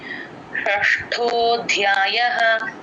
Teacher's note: టంగని లోపలికి ట్విస్ట్ చేస్తే అష కొంచెం కరెక్ట్ గా వినిపిస్తుంది. షష్టో ధ్యాయః ఆ ధ కింద మహాప్రాణం య వత్తు రెండు వినిపించాలి. ఇక్కడ